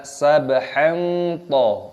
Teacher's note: ada fathah tanwin yang bertemu dengan to, hukumnya dibaca ikhfa, disamarkan, dibaca sabhan to.